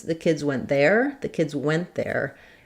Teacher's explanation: In this case, I'm more likely to be putting emphasis on the went.